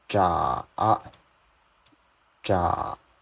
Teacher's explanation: The third tone, first you need to go down, then you need to go up.